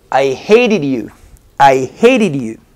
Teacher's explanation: esta t se pronuncia como r